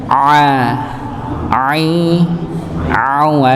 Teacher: situ ada katup tenggorokan Maka kalau misalnya baca huruf Ain itu kayak ada tekanan